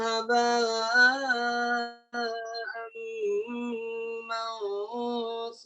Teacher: Jadi kalau dalam satu makhraj nun sama mim itu sama-sama di hidung khoisum. Makanya dia jadi idgham. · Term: idgham mutajanisain